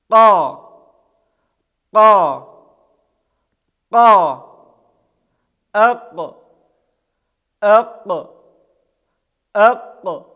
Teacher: Буква Каф произносится, когда задняя часть языка прижимается к задней части неба и затем отрывается от нее.